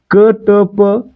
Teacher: क ट प यांचा उच्चार करताना हचा उच्चार होतोय का, नाही होत आहे, म्हणून यांना आपण काय म्हणणार अल्पप्राण म्हणणार.